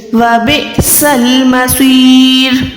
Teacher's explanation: یہاں پر موٹا سواد ہے تو یہاں پر منہ کو گولائی کریں گے۔